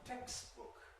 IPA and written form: ˈtekstbʊk (textbook)